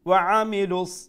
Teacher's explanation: make sure you pronounce the ain from the middle of the throat